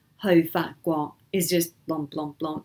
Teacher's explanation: the hou fa guo is all that mid tone